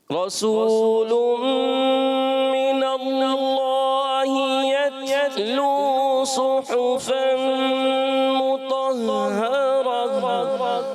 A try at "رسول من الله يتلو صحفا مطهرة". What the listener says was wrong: اچھا رسول من اللہ، ادغام کا غنہ بھی کرنا ہے ایک الف کا، اور اس کے علاوہ یتلو کلکلا نہ ہو، یتلو یتلو، یہ کیا ہوتا ہے؟